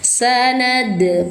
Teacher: pantulkan suara dal tanpa terjeda suara